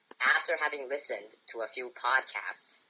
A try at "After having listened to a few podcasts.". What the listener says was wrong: Much better.